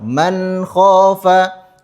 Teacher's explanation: huruf nun dibaca dengan jelas. Tidak boleh ada jeda antara huruf nun dengan huruf k. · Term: izhar halqi